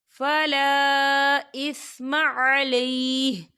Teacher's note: فلا، یہ دیکھیے فلا خال الف سے پہلے زبر ہے اور اس میں مد بھی ہے، تو ہم اسے 4 حرکت کے برابر کھینچ کے پڑھیں گے